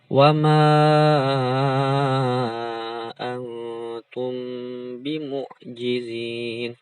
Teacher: Di sini ada mim sukun atau mim mati bertemu dengan huruf ba, maka didengungkan. Nah, ini antum, ini ikhfa hakiki, di sini ikhfa syafawi.